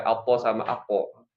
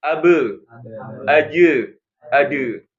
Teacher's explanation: o sama ko itu yang tebal ya, apo sama apo. Sementara ba, jim sama dal tipis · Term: qalqalah